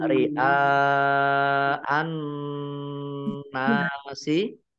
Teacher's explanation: Dibaca panjang harus panjang 5 harokat. Ya. Kemudian alif an-nasi, alif lamnya alif lam samsiah karena tidak dibaca langsung masuk ke huruf berikutnya yaitu nun, ditandai dengan nunnya ada tasdidnya. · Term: mat wajib muttasil